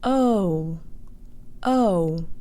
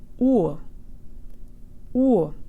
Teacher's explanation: The English O actually closes to an oo sound. · But Russian does the opposite. Start closed and open up a little, either from an O to an ah sound or from an oo to an o sound.